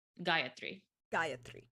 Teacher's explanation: I added an extra a in there just to emphasize the first syllable